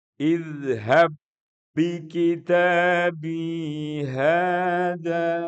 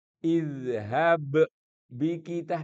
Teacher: Ba pertama masuk ke ba kedua dan karena itu dia menjadi tasdid. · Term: idgham